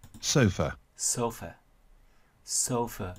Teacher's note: Từ này trong âm nhấn và âm đầu tiên đọc dài hơn, to hơn, rõ hơn · Đây, trong trường hợp này chữ O thì đọc thành âm O, còn chữ A này chỉ chuyển thành âm schwa bởi vì nó không là một âm nhấn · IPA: /ˈsəʊfə/